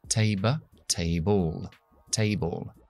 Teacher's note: Cuando vemos al final de una palabra una L y una E, esa E no se pronuncia, pero se pronuncia una schwa delante de la L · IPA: /teibəl/